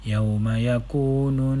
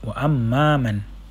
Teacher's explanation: Berikan penekanan pada bacaan dengung 2 harakat pada kalimah mim syaddah dan nun syaddah. Ini wajibul gunnah.